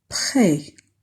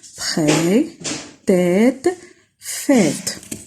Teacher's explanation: C'est en effet le même son que le E accent grave, sauf qu'il est question ici d'une voyelle longue et non brève.